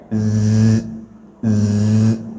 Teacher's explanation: Kalau huruf zai ini dia Pak berangin, ada desisnya. Z, z, sama dengan kita baca huruf sin, ya.